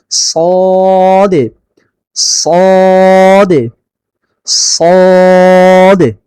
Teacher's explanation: জিহ্বার গোড়াটা উপর দিকে উঠাইতে হয়, জিহ্বার গোড়া উপরে উঠাইতে হয়, তাহলে এটা মোটা হবে।